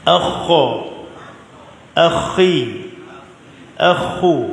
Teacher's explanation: Mesti ada sedikit getaran kha. Dia macam serak-serak tu. Bunyi serak tu, tetapi jangan sampai drill kuat. Dia tak boleh drill kuat, dia jadi susah.